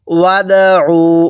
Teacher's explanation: দালটা ধাক্কা দিয়ে পড়ব কারণ দালটা কলকলার হরফ। তাহলে ওয়াদউ, এক আলিফ টান দিব, এই আলিফটাকে বাদ দিব।